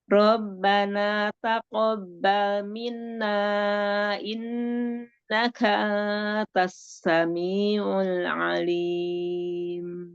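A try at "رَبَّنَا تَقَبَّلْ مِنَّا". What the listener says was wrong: Rahman yang minna itu ada nun musyaddah. Tadi kurang ditahan. Bal taqabbal minna. Robbana taqabbal minna. Nah, ini Umi Afwan, minanya kan Umi di wasol ya. Kalau di wasol dia kan ketemu jadi mad jaiz munfasil. iya kan ada ketemu hamzah. dipanjang-panjang.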